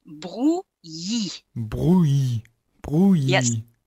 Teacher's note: you are running into the infamous ILL sound in French, which is the sound Y, which is the sound that you find in Yahoo